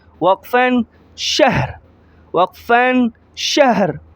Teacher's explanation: را کو صرف ظاہر کریں گے، اس کی زبر زیر پیش کو ظاہر نہیں کریں گے اسٹاپ کی حالت میں